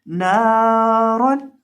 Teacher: اس لفظ کے اندر ہم را کو پر پڑھیں گے، را کو مفخم پڑھیں گے۔